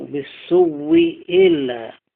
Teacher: المختار عنهما هو إبدال الثانية واوا وإدغامها في الواو